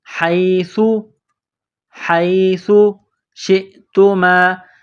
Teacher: ساتھ پلس کرنا ہے، ہا یا زبر حی، یہ سا ہے، سا کو نرم کرنا ہے، زبان کا سرہ تھوڑا سا باہر نکالیں گے سا کو پڑھتے وقت